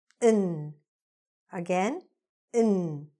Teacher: ON is reduced or shortened with that schwa sound and sounds like n